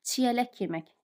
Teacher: K-dan sonra samit gəldiyi üçün tələffüsdə x üstü ştrix olacaq